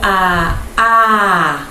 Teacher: quando eu digo a, toda a minha boca está aberta, tudo está livre